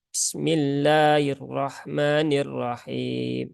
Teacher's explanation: ketika membaca basmalah sifat rakhawahnya pada huruf Sin menghilang ya bmillahirahmanirahim Nah itu tidak jelas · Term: sifat rokhawahnya